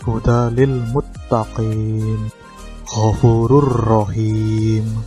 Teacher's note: Ro dan lam merupakan huruf bila gunah, sehingga saat sedang idgham tidak disertai dengan dengung. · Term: idgham bila gunah